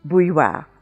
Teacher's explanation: you have two semi-vowels coming together, the y and the w